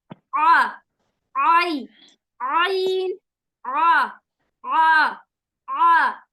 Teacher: आइन जो है हलक के बीच वाले हिस्से से निकाला जाएगा। थोड़ा सा हमें जो जबान की जड़ है उसको हम तालू की तरफ यानी ऊपर की तरफ उठाएंगे, जो हमारा सॉफ्ट पैलेट है, तो थोड़ा सा हमें उस पर ना स्ट्रेस डालना होगा और थोड़ी सी प्रैक्टिस भी लगेगी इंशाल्लाह, लेकिन आसानी होगी।